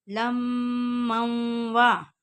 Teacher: میم کے اوپر غنہ کریں گے، میم مشدد اور نون مشدد ہمیشہ غنہ ہوتا ہے